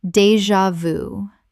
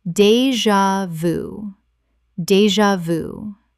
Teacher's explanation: Three syllables with the j making a z sound.